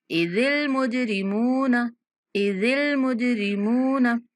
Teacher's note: जीम पर कलकला करना है, मीम को 1 सेकंड तक लंबा करके पढ़ना है।